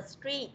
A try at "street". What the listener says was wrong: Ra đây là âm yes. Y dài. Mình đừng đọc âm y ngắn nhé. Mình đọc là y dài cho nên phải đọc street.